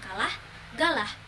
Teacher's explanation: konsonan hambat velar Yaitu mencakup K dan G